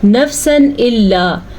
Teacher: تنوین کے بعد حروف حلقی میں سے الف آیا ہوا ہے تو یہاں پہ اظہار کا قاعدہ ہوگا